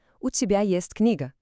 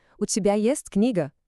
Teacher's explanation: A afirmação é o tibest kniga tom reto. Agora a pergunta o tibest kniga tom subindo.